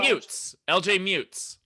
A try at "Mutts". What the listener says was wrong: Mutts. Yeah, you said mute.